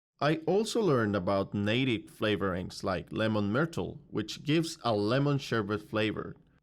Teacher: the candidate groups words together into chunks or ideas and pauses in between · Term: rhythm